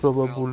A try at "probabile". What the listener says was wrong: vowels more Italian sounding, so probabil, and then you pronounce the E that we don't pronounce in English, probabile.